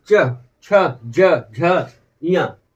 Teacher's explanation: मतलब जीभ जो है तालु को टच करेगी